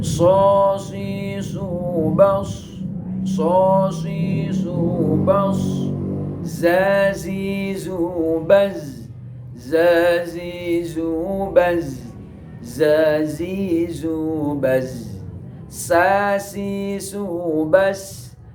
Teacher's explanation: keluar dari ujung lidah menepati dengan ujung gigi tengah 2 yang bawah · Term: asaliyah